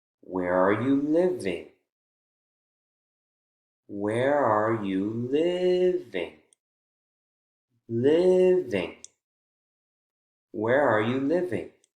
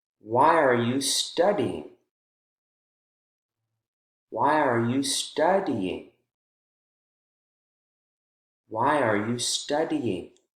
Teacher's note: with wh questions our voice goes up in the strong syllable of the focus word and then begins to fall all in one fluid motion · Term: rise and then fall